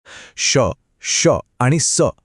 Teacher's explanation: मुखात प्रत्यक्ष घर्षण होते आणि त्यातून चक्क उष्णता निर्माण होते अगदी शिट्टी वाजवल्यासारखे म्हणजेच शित्कार केल्यासारखे हे ऐकू येते मुखात होणारी ही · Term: घर्षक वर्ण